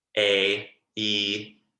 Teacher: As you can see, when I say a word like A, E, I'm spreading a lot.